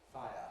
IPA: ˈfaɪə